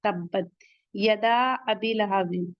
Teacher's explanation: यदा एक कलिमा है, हमजा दूसरे कलिमे में आ रहा है, मद्दे मुनफसिल, यहाँ पे 4 काउंट पढ़ेंगे